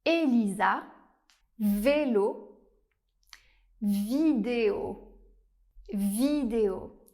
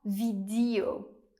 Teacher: En français, on retrouve aussi le son /e/ fermé